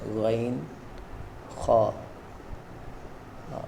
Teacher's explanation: غین اور خا یہ حلق کے اوپر والے حصے سے ادا ہوتے ہیں، اس کا دھیان رکھنا ہے۔